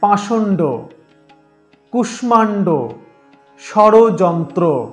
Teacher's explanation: মূর্ধন্য স এর উচ্চারণ স্থান মূর্ধা, অর্থাৎ দন্তমূলের পেছনে খাস কাটা অংশে